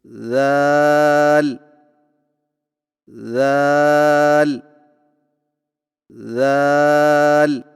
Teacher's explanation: ذال کی ادائیگی میں زبان کی نوک کو سامنے والے اوپر کے 2 دانتوں کے اندرونی کناروں سے نرمی سے لگا کر باریک آواز میں پڑھیں